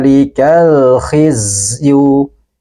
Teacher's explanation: lamnya harus kita baca dengan jelas dan sebagian suaranya kita alirkan